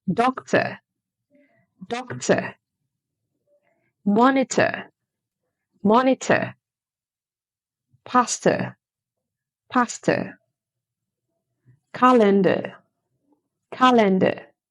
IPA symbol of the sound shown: ə